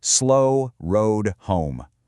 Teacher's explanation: By repeating that long O sound, we actually force the reader to physically slow down. Assonance stretches out the pacing of a line and gives it this really resonant, almost musical quality.